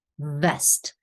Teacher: for V the upper teeth have to touch the bottom lip